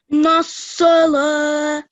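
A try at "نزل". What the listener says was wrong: Just this lam, try not to say it like a thick letter. The lam, we only do it thick if it's within Allah's name, yeah?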